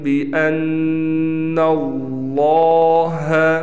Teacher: لفظ اللہ کلام موٹا پڑھا جائے گا